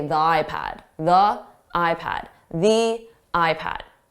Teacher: So if you use one or the other, or if you hear native speakers using one or the other, just know that both are acceptable, and it's probably slightly more likely to use the stressed version, the, with a vowel, simply because it makes it easier to pronounce those sounds